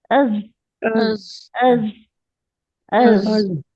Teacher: ہمارا vocal cord یا نرخرا وہ مرتعش ہوگا. تو از سختی سے ادا ہو جائے گا.